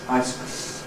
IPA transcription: ˈice cream